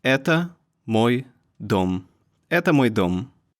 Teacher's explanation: Although это is pretty short, it has 2 syllables, and the stressing goes on the first one.